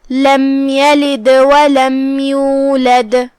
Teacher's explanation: کلمت لم کے آخری میں میم پہ جزم ہے، یہاں حکم ہے اظہار شفوی، ہم میم کو ظاہر کریں گے اور اسے بغیر غنہ کے یہ حکم کو ادا کریں گے. کلمت یلد میں یا پہ زبر ہے، لام کے نیچے زیر ہے، یہ دونوں حرکات کا دھیان رہے، ہم اسے ادا کریں گے.